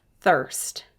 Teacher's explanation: we hear the er because the r is controlling that vowel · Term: er sound